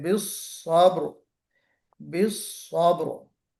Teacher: इस्तिअला भी है, इतबाक भी है, और हल्की सी सीटी भी बजनी चाहिए। क्यों? सफीर भी है ना, तो इसका ख्याल करते हुए हमें स्वाद को अदा करना है।